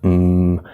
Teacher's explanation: touching of the tongue to part of the mouth or maybe your lips closed like an M we let the sound go through the nose mmm it's a nasal sound nasal means related to the nose